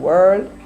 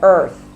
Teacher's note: Them other people say air and pronounce the e r sound air. We say er like the Americans.